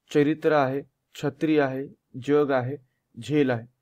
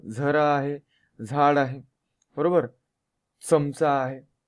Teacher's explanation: च छ ज झ या वर्णांचे उच्चार तालव्य व दंत तालव्य अशा दोन्ही पद्धतीनं होतात